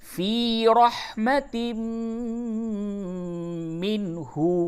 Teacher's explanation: تنوین کے بعد میم ہے، اس جگہ پہ ادغام مع الغنہ ہوگا